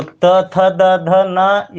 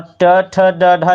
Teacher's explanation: त, थ, द, ध, न ये टोटल जो है कि दंतय वर्ण के अंतर्गत आता है, और ट, ठ, ड, ढ जो है ये दंतय नहीं मूर्धा के अंतर्गत आता था